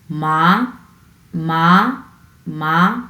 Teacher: এটি মাঝারি থেকে উচ্চ স্বরে ওঠে। মাঝারি থেকে উচ্চে, এখানে উচ্চে ওঠে, এর মানে হচ্ছে মাঝারি থেকে উপরের দিকে আপনার উঠবে। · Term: সেকেন্ড টোন